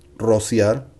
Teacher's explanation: being the first R at the beginning of the word, it goes strong, rolling tongue.